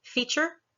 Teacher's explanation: We have an almost ch sound for retrieve and feature.